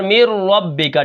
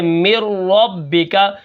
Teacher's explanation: ٹھیک ہے، تو یہاں پر دیکھیں ادغام بلا غنہ کتنے حرفوں میں ہوگا، 2 حرفوں میں. اگر نون ساکن نون تنوین کے بعد را آ جائے تو یہ نون ختم ہو جائے گا، تو وہاں پر مِن ربک.